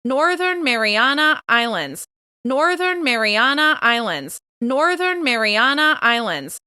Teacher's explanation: Once again, we're going to stress that last word. We're going to stress the first syllable of islands.